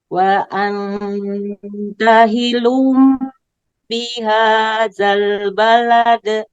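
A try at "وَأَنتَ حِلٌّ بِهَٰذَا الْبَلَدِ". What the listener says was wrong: Ulangi, lamnya ditasdid Bu. Hillum begitu.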